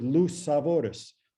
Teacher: when the stress is no longer on the word luis but shifts then the ui becomes oo